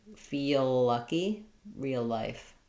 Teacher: They both link with one long L.